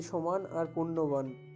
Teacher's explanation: প্রথম চরণের শেষে আ স্বরধ্বনি সহ দন্ত ন ব্যঞ্জনধ্বনি আছে, দ্বিতীয় চরণের শেষে তারই অবিকল পুনরাবৃত্তি হয়েছে, সুতরাং এটি বা এটা অন্তনুপ্রাসের উদাহরণ।